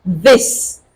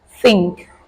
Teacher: the th sound which comes in two varieties voiced as in this and unvoiced as in think